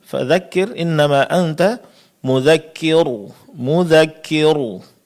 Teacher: Ro yang seharusnya tipis malah ditebalkan.